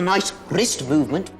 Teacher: you just heard the distinctive rolling r that is common to the scottish accent